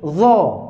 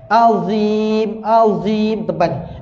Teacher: Huruf dha itu dia tebal. Isti'la.